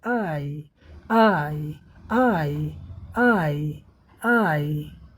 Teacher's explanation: Diagram में देखें और बोलें। आ से ई की तरफ हमारी जीभ भागती है। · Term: डिप्थांग